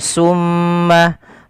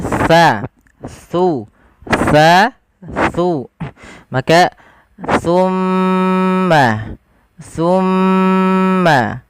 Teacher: Makhrajnya ujung lidah. Ujung lidah kita menempel dengan gigi seri atas kita. · kita harus hati-hati di dalam melafalkan huruf tsa. Jangan sampai kita menggantinya dengan huruf sin.